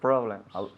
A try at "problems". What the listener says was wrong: Problems. You have to close your lips with the M. Problems. Yes, you have to close the lips with the M.